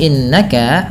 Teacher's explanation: Nun yang berharakat tasydid ini ditahan dengan bacaannya dua harakat dengan menahan bunyi nnya yang kita kenal dengan istilah yaitu ghunnah